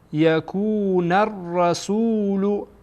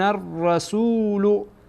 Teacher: اینجا نون با را وصل میشه